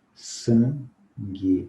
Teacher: o N eu não pronuncio. Pronuncio o A, nasalizado, G. Pronuncio U, também não.